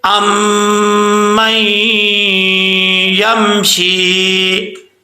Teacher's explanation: نون ساکن کا ادغام، تو یہاں پہ بھی 1 الف کی مقدار غنہ کیا جائے گا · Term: ادغام یرملون